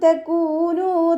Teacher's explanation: കാഫിൻ്റെ കൂടെ വൗമദ് വന്നു, 2 കൗണ്ട് നീട്ടിക്കൊടുക്കുക.